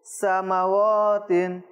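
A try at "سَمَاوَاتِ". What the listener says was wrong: ওয়াও মিমও টানতে হবে।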